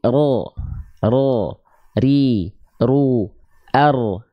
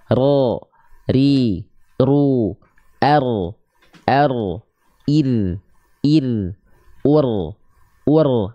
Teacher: huruf ro tidak menuntut kita melafalkan dengan banyak getaran Kenapa karena huruf ro dia punya sifat yang disebut dengan takrir